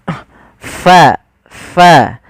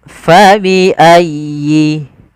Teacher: ada angin yang dikeluarkan, karena fa salah satu sifatnya sifat hamz, yaitu mengalirnya nafas kita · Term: huruf fa